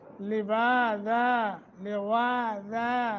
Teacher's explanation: واو کو موٹا اور 1 سیکنڈ کی مد